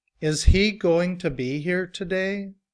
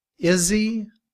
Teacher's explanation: in reduced form, we drop the sound of the h and combined with is. We say is he.